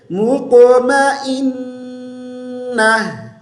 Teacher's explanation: حمزہ کو نون کے ساتھ ملیں گے، غنہ کریں گے، غنہ کی مقدار پوری کریں گے، پھر ہم نون کے اوپر زبر پڑھیں گے اور آخر میں گول تا کو ہم ہا میں تبدیل کر دیں گے.